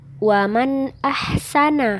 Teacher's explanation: nun sukun tanwin dengan demikian harus dibaca terang jelas dan pendek suaranya juga tetap jelas tidak samar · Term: izhar halqi